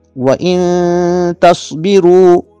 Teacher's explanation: نون ساکن ہے، اس کے بعد 15 حروف میں سے تا آ رہا ہے، لہٰذا اخفا مع الغنہ ہوگا۔